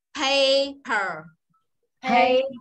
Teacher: thấy âm A nó dài gấp đôi nguyên âm ơ chưa?